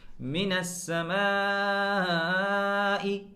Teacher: یہاں ہم آواز کو 3 الف کے برابر کھینچ رہے ہیں